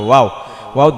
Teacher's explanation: আর ওয়াও এর মাখরাজ হচ্ছে ঠোঁট, দুই ঠোঁট হইতে ওয়াও বা মিম এই তিনটা হরফ উচ্চারিত। ওয়াও ওয়াও দুই ঠোঁট থেকে উচ্চারিত হয়। যদি আও আও বলেন তাহলে মুখ থেকে উচ্চারিত হবে, মাখরাজ সম্পূর্ণ আলাদা হয়ে যাবে।